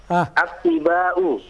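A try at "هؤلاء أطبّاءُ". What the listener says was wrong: Yang diberi tasdid ba'nya, bukan to'nya. Yang diberi tasdid ba'nya, bukan to'nya. Naam, atibba'u. Jangan attiba'u, salah.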